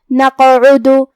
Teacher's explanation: کلمت نقعد میں یہاں حرف القاف ہے، اور قاف کی ادائیگی زبان کے جڑ اور تالو کے نرم حصے سے ہے، اور قاف حروف تفخیم میں سے بھی ہے، تو ہم یہ حرف کو موٹی آواز میں پڑھیں گے، اور کیونکہ اس پہ جزم ہے تو یہاں ہمیں قاف کو قلقلہ سے پڑھنا ہے، مطلب ہم یہ حرف کو ہلاتے ہوئے یہ کلمہ کو پڑھیں گے. نقعد.